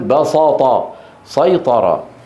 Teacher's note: ومن العرب من يفخم السين من هذين الفعلين ليه لمجاورتها الطاء المستعليه المطبقه